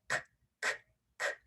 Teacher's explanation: That hard C or K sound is k, k, k. There's actually no voice at all in that one.